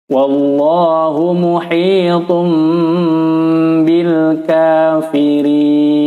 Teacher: Tanwin bertemu ba, hukumnya adalah iqlab, makanya ditandai dengan mim kecil. Maksudnya suara nun sukun atau tanwin berubah menjadi suara, ditukar menjadi suara mim dan ditahan pada ketukan.